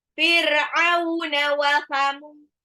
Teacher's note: ainnya diperjelas, tenggorokan tengah